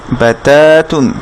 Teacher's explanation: তাতে এখানে এক আলিফ মাদ আছে, এখানে বায়ের সাথে কোনো টান নাই। দেখি আমরা ফাতহার বামে কোনো খালি আলিফ দেখতে পাচ্ছি না, সেজন্য বাতে আমরা টানবো না বা।